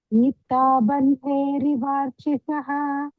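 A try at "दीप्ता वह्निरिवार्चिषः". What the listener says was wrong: Bandhe, verb, it should have been ver over there, bandhe. Ver we should do, not b. Bandherivarchisha.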